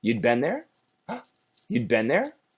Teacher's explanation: because it's a question we have to raise the tone at the end of the sentence